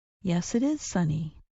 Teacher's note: When Americans answer a yes or no question with yes, we sometimes say the words with no break. The sounds blend together.